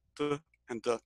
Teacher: But in Spanish, they actually put the tongue right against the back of the teeth. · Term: dental sounds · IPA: t d